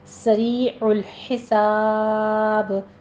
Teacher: س اور حساب دونوں جگہ سین میں سیٹی کی آواز آنی چاہیے ، سریع میں یا مدہ ہے اور حساب میں ہم مدارس · مدارس وقفی کر دیں گے، یہاں بھی 6 کاؤنٹ کریں گے، آخر میں با کے اوپر قلقلہ ہوگا کیونکہ با ساکن ہو جائے گا وقف کی صورت میں